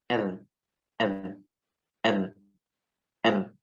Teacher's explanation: Ro di ujung lidah yang digetarkan.